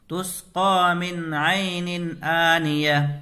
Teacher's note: 4 قاعدے میں سے پہلا قاعدہ اظہار ہے، تو یہاں نون ساکن کے بعد حروف حلقی میں سے عین آ رہا ہے تو نون کو ظاہر کر کے جلدی پڑھیں گے. اور یہاں تنوین کے بعد حروف حلقی میں سے حمزہ آ رہا ہے تو نون کو ظاہر کر کے جلدی پڑھیں گے.